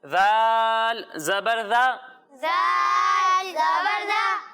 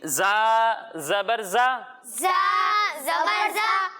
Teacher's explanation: جب ہم ذال کی ادائیگی کریں گے تو اس میں سیٹی کی آواز نہیں آئے گی، اور جب ہم زا کی ادائیگی کریں گے تو اس میں سیٹی کی آواز آئے گی